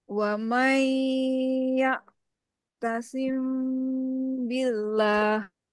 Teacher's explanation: ikhfa syafawi mim sukun bertemu dengan huruf ba disamarkan lalu didengungkan